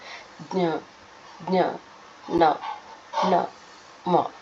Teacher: ಮೂಗಿನ ಸಹಾಯದಿಂದ ಹುಟ್ಟುವ ಅಕ್ಷರಗಳು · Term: ನಾಸಿಕ